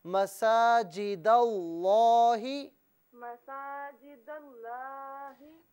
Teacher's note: लाम को मोटा करके पढ़ें, लफ्ज़ अल्लाह की जो लाम है ना इसे पुर करके पढ़ें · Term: लाम को पुर